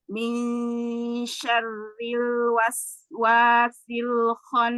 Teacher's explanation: Sinya memang rah, tapi jangan sampai memutuskan suara ya. Jangan sampai terputus antara sin sukun dengan wa berikutnya.